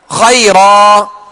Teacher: اب 2 زبر کی تنوین کو ہم نے الف سے بدل دیا، 2 زبر کی تنوین کو الف سے بدل دیا، اب جو ہے تنوین ختم ہو گئی۔ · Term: وقف